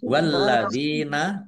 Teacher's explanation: Walladina lamnya dibaca dobel ada tasdidnya.